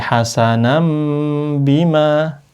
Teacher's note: Nah, kalau bertemu ba, karena dia iklab hukumnya harus diganti n-nya diganti m, nun-nya diganti mim, maka dikasih mim di sini.